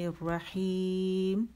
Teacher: میم آخر میں آواز بالکل جاری نہیں رکھنی، ایک کاؤنٹ کے لیے جاری رکھنی ہے، ٹھیک ہے؟ تو یا تو بہت جو بھیج رہے ہیں آواز میم کے آخر میں بالکل غائب ہوتی ہے، اس پہ ایک کاؤنٹ کے لیے جانا ضروری ہے۔